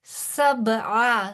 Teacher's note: سب، با پہ قلقلہ کیونکہ یہ حروف قلقلہ میں سے ہے، عین کی آواز وسط حلق سے